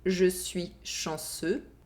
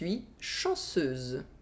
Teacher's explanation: The only difference between these two sentences is that a [z] sound is added in the second sentence.